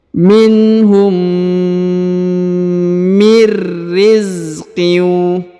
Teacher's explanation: nun sukun bertemu ro bertasdid, maka nun sukunnya menjadi hilang dan melebur ke huruf ro